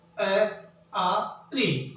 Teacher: हमारी जो जीभ है उसके मध्य बीच के भाग से इनका उच्चारण होता है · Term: मध्य स्वर